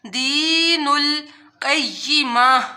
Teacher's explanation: جب ہم لوگ وقف کرتے ہیں گول تا آ جاتی ہے تو اس کو تا نہیں پڑھا جاتا، وہ ہاں میں بدل جاتی ہے